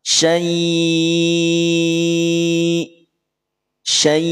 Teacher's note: Sukunnya sukun baru atau aridi. Ingat, pada saat hamzah sukun maka suaranya terputus atau terhenti. Tidak dialirkan, maka akan terdengar hamzah yang diputus suaranya.